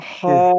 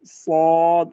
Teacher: زبان کی جڑ تالو کی طرف اٹھتی ہے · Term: مستعلیہ